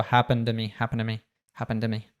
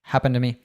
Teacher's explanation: he connected the -ed at the end of happened to TO and dropped the T in TO and also it became schwa sound